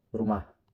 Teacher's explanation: Indonesian we flap the r